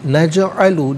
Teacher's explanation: نجعل جیم ساکن ہے لیکن حرف قلقلہ ہے, آواز لوٹتی ہوئی محسوس ہونی چاہیے